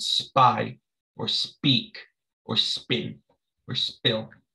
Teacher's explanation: you don't add that puff of air that you do with the normal p it's like a b almost